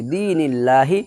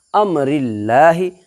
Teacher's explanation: اللہ کا لام باریک ہوگی اس لیے کہ اللہ کے لام سے پہلے زیر ہے